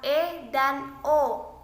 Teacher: vokal yang dibentuk dengan lidah diangkat 2/3 menutup mulut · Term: vokal semi tertutup